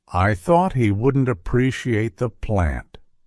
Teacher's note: in typical American English that final T is less pronounced instead when I pronounce that last t my tongue simply makes contact at the roof of my mouth without fully releasing the sound